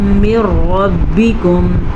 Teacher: نون ساکن کے بعد را یا لام یا را آ جائے تو دونوں کو آپس میں ملا دیتے ہیں اور بغیر غنے کے ملاتے ہیں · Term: ادغام بلا غنہ